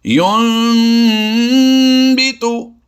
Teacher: نون ساکن کو ہم نے میم سے بدلنا ہے. نون ساکن کو ہم نے کیا کرنا ہے، میم سے بدلنا ہے. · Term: اقلاب